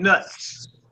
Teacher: So you trip off at the end of the word is like a t and a s together. T and a s is blended together. It makes a z sound. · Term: ts sound